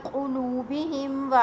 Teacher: In qulubihim ala sam'ihim, the Meem Sakin is followed by wa. You must pronounce the Meem clearly without a nasal sound. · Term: Izhar-e-Shafawi